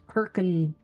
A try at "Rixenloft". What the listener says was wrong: The H is mostly silent. It's Rickson.